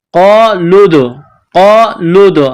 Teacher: تو لام کو دال کے ساتھ پلس کرنا ہے. دال ساکن ہے تو یہاں پر قلقلہ کرنا ہے. لام دال پیش لود.